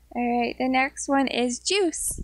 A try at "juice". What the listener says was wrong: Juice, not Joyce. Juice. Juice, عصير.